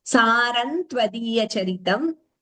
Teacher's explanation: When anuswara followed by ta, we combine the sandhi and chant it as Saram tvadiya charitam.